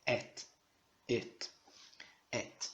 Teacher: Elohim, Et. Só lembrando também de você pronunciar como t, não colocar aquele i no final que nós brasileiros temos a mania, né? Não é et, é et, et, et.